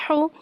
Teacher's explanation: हा के ऊपर पेश है, पेश को होठों की गुलाई के साथ अदा करके पढ़ेंगे